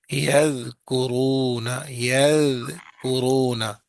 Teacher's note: ذال کی آواز باریک اور نرم ہوتی ہے